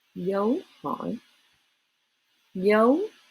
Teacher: you start low go up go down go back up almost sounds like two syllables right almost like two syllables so then you're at sounds almost